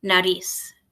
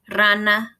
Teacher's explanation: The beginning of a word, the letter R is a rolled R, rana. When it's in the middle of a word, like in the word nariz, it has a tiny bit of a trill, but it's not rolled the same as it is at the beginning of a word.